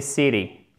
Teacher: Le T, il devient presque un D, ce qui donne l'impression d'entendre CD, city.